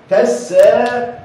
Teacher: ما بنطقش الالف، بنطق بمد او بطول حركه السين بس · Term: حركه طويله